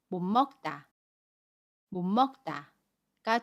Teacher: 받침 시 옷은 받침소리 니은으로 발음하고 먹에 미음은 그대로 발음합니다